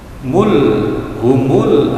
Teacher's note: alif lam qamariyah, karena dibaca jelas alif lamnya